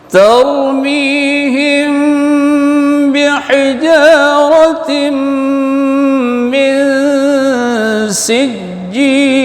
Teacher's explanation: Ta tetap ta, ra tebal tar. Jangan tor.